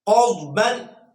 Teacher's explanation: دائیں جانب والا زبان کا کنارہ جو ہے، سائیڈ جو ہے، وہ اوپر کی داڑوں کے ساتھ لگے تو اس سے ضاد ادا ہوتا ہے. دعاد اور زعاد یہ دونوں ہی درست نہیں ہیں، اس کے بین بین ہے